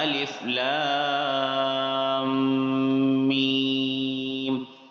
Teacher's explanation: میم ساکن کے بعد میم آ رہی ہے، تشدید ہے نیچے یہاں پر، تو ہم یہاں پر غنہ کریں گے تھوڑا سا